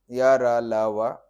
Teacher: अंतस्थ के सारे वर्ण सघोष हैं और अल्प प्राण है · पहले य क्योंकि तालू से उच्चरित है फिर र मुर्धा से उच्चारित है ल दंत से उच्चरित है · य क्योंकि तालु से उच्चरित है, फिर र मूर्धा से उच्चरित है, ल दंत से उच्चरित है, व ओष्ठ से उच्चरित है, व को दंतोष्ठ माना गया है पाणिनीय शिक्षा में या कई प्राचीन ध्वनि वैज्ञानिक ग्रंथों में।